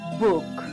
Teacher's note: K and G are velar stops, and they are produced with the tongue touching the roof of the mouth at the velum or soft palate